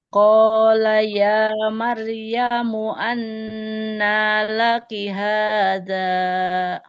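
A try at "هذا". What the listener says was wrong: Haza, zalnya 2 harokat saja. Qala ya Maryamu anna laki haza.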